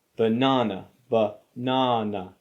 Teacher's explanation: the first syllable and the last syllable use the schwa sound,